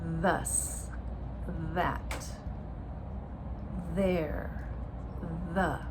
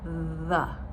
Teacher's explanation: let's make sure we stick out our tongue and we have the vibration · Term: voiced